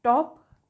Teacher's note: when you produce top you should feel a puff of air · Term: aspiration